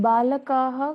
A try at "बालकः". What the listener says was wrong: Okay, here it is balakah. There is fakka, there is no dirgham. Balakah.